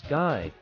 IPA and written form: ɡaɪ (guy)